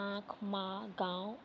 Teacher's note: अनुनासिक स्वरों के उच्चारण में मुख से अधिक तथा नाक से बहुत कम सांस निकलती है